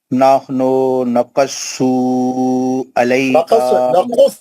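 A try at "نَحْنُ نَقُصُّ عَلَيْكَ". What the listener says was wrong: दोनों पेश उतना खींचना नहीं, नकुस्सु नहीं बोलना, नकुस्सु एक हरकत, कहीं को खींचना, एक पेश है खाली यार, उल्टा पेश थोड़ा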